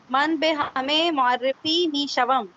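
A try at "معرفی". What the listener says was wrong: मुआरिफी, मारिफी नहीं, मुआरिफी.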